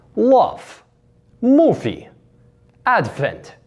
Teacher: This is an example in words like love, movie, and advent would be changed with that F sound